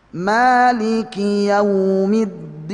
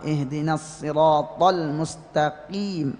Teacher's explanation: kaf itu keluar desis ya, ki beda dengan qaf, nanti mustaqim tanpa desis